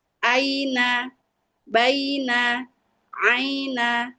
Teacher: Jadi ketika fathah diikuti ya sukun bersuara dibaca pendek.